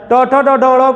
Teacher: ट ठ ड ढ ड़ को ट वर्ग की ध्वनियां बोला जाता है और इनका उच्चारण मूर्धा से होता है।